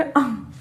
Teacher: आपकी वायु मुंह से भी निकलेगी और नाक से भी निकलेगी। ठीक है, अंग में दोनों से वायु निकलती है। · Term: अनुनासिक